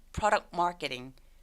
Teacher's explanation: 얘도 자음이 계속되죠. 중간에 있는 T 소리 또 삭제. 그래서 product marketing.